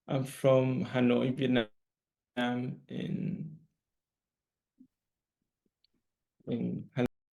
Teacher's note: there's not intonation there that suggests that he's finished giving the answer